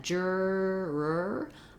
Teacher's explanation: So when I'm doing that juror, I'm basically holding that tight R sound, relaxing it a little, and then bringing it back so I can hear that there's two of them. Because otherwise it's going to sound like juror, one long tense sound.